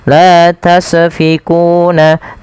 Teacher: Tasfiquuna itu memantuk sinnya. Agar sempurna alirkan nafasnya. Karena sin punya sifat saofir.